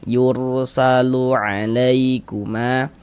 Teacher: Huruf ra sukun sebelumnya harakat dommah maka huruf ra sukunnya dibaca tabkhim. Dibaca tebal. Eah. Yur tebalkan huruf rnya yursalu alaikuma. · Huruf ra tanda sukun tuh seperti ini, huruf sukun atau huruf mati itu maksudnya sama saja, tandanya tuh seperti ini. Huruf ra sukun sebelumnya harokat dhammah, maka huruf ra sukunnya dibaca tabkhim, dibaca tebal.